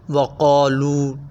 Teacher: قاف موٹے حروف میں سے ہے، قاف کو موٹا پڑھا جائے گا۔ وقالو لام پیش واو لو اور آگے الف نظر آ رہا ہے، تو اسے ہم ایک الف کے برابر کھینچیں گے، اسے الف مدہ بھی کہا جاتا ہے۔